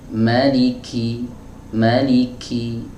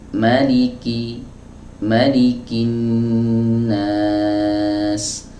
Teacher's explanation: tidak boleh kita ucapkan huruf kaf ini dengan dengan sifat hams yang berlebihan